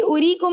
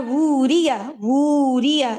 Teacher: उरीकुम, अब ये उरीकुम में देखे मैं वाव नहीं पढ़ रही क्योंकि उस पर राउंड जीरो है, लेकिन मैं वूरिया, वूरिया इसको मैं एलोंगेट करूंगी क्योंकि ये वाव मदिया है प्रॉपर